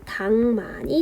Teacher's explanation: 때문에 자음군 단순화가 먼저 일어납니다 리를 탈락시키고 닭만 기억만 발음해 줍니다 뒤에 있는 미음의 영향을 받아서 역시나 기억이 비음화 됩니다 그래서 최종 발음은 당만이 됩니다 닭 릴 기역만이 하나 탈락하고 닭만이